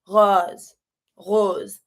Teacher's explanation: the O is not like a strong O, but more open